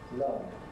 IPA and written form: lʌvd (loved)